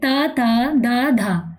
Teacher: हमारी जो जीव है वो स्पर्श कर रही है दांतों को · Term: दंत वर्ण, दंत वर्ग